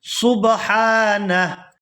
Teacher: وقالوا اتخذ اللہ ولدا سبحانہ، یہاں پر وقف کریں گے تو وقف کی صورت میں ہا جو ہے یہ ساکن ہو جائے گی اور نون کو ہا ساکن کے ساتھ ملائیں گے